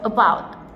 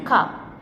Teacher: These vowels are pronounced with the tongue in the middle of the mouth. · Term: central vowels